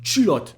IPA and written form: tʃylɔt (culotte)